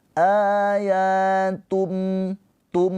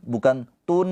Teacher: Jadi tanwinnya ini nggak dibaca lagi, cuma dhammahnya aja. Dari dhammah ini langsung ke mim. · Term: iqlab